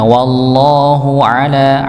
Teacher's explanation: Ainnya sekali lagi ditekan karena dia tempatnya adalah tengah ee tenggorokan maka dia di sedikit di ada tekanan di situng ainnya.